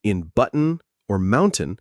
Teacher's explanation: a glottal stop T, a throat catch